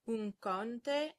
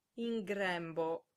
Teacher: N also gets assimilated into ng if it comes before k or g.